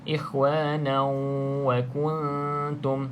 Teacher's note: Okey, selepasnya bukan lam ataupun ra, maka baca dengan 2 harakat dengung. Ikhwanau, cuma dengung di sini dengan cara idgham, iaitu masuk ke dalam huruf waw, sebab di sini idgham ma'al gunnah.